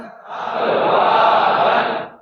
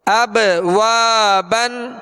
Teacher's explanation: وا، با دو زبر بن، اب وا بن اب وا بن۔ با پر کیا کریں گے قلقلہ کریں گے، آواز میں جنبش ہوگی ، اب وا بن اور واو کے ساتھ الف مدہ ہے،